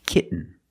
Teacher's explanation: When you have T-E-N, T-O-N, or T-A-I-N at the end of the word, and the syllable is not stressed, the T makes a different sound. We have to make a stop T and link it to the N.